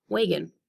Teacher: I stress the first syllable, and the second syllable becomes a little bit of the different sound, and that is the schwa